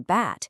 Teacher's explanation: For the B in bat, you flip the voicing switch on. Go ahead, feel your throat when you say them.